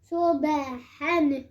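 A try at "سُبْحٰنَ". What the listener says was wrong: ہاں ہا کو بالکل کلیئر پڑھنا ہے کرسٹل کلیئر صبحن مثلا فضلا اچھا دعاد میں قلقلہ نہیں ہے فضلا آگے پڑھیں صفا رحمتن ایک بار پھر سے رحمتن اچھا ہاں میں اتنا جو آپ نے اپنے منہ کا جو دروازہ کھولا ہوا ہے نا ہاتھ کے اندر کرنا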